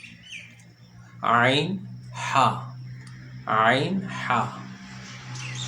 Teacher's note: وسط حلق میں سے عین اور حا ادا ہوتے ہیں حلق کے درمیان میں سے